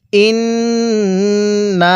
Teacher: আগে গুন্নাহ করবেন পরে নুনের মধ্যে টান দিবেন